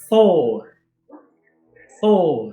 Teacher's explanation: esse R, o R nórdico, ele é um R trinado. Você tem que tremer a língua no céu da boca.